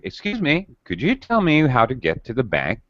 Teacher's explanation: this is something that we call drop rise intonation it drops and rises it falls and rises your pitch goes up and down um fairly rapidly really excuse me could you tell me how